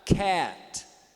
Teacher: Então ele é mais aberto do que o E. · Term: vocóide anterior baixo fechado